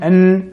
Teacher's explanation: nous avons la partie linguale et la partie nasale